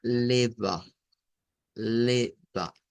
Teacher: Noten lo que sucede con las vocales que terminan con una A y son bisílabas. Se usa una A media centralizada. Entonces, esto va a sonar a leva, leva.